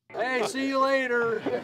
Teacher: Do you hear how the music or intonation falls after the peak syllable stress in later? That's a falling intonation pattern, and it indicates confidence.